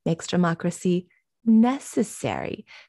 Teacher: He pauses and really slows down on that word, necessary, and says it syllable by syllable.